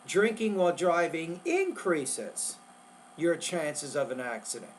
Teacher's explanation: You want to emphasize the word increases because increases is the opposite of decreases. So you want to make that word longer, louder, clearer, and higher pitch.